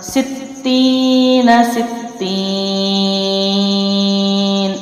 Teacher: حروف مدہ کے بعد حرف جو ہے وہ ساکن ہے، اس لیے اس کو یا کو 3 الف لمبا کیا ہے